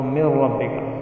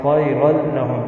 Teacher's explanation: نون ساکن یا تنوین کی آواز بالکل غائب ہو جاتی ہے۔ جیسے من ربک، من ہے نون ساکن ہے، را آ گیا تو من ربک، تو نون ساکن کی آواز اس میں ضم ہو گئی، یعنی ختم ہو گئی، سائلنٹ ہو گئی۔ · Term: ادغام تام